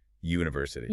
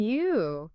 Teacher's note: The very first phonetic sound is a hard Y. That Y sound is a consonant.